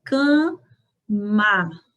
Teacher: O primeiro A se pronuncia nasalizado. Cama. Já o segundo A, nós pronunciamos com som aberto.